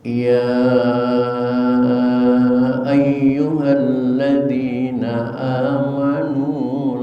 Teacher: Yang perlu diperhatikan dalam bacaan tadi diantaranya adalah ya mad jaiz munfasil, panjangnya boleh 2, boleh 4, boleh 6